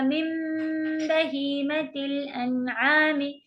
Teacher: نون کی بالکل آواز چلی جائے گی، میم میں بدل کے اسے پڑھیں گے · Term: اقلاب